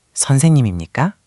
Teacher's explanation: Be careful with intonation. With imnikka, you want a clear rising question tone at the end.